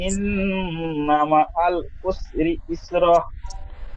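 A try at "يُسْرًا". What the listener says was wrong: ইস র টান ছেড়ে যাচ্ছে জি, আয়াতের শেষ। বানান করবার সময়, রিডিং পড়বার সময় যেখানে টান আছে সেখানে টান ছেড়ে যাচ্ছে, যেখানে গুন্না আছে সেখানে গুন্না ছেড়ে যাচ্ছে, রিডিং পড়বার সময় এবং বানান করবার সময়।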